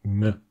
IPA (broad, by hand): ŋ